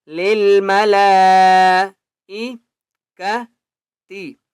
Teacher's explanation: لام کے اوپر بڑی مد ہے اس لیے لام کو پانچ الف کی مقدار کھینچ کر پڑھیں گے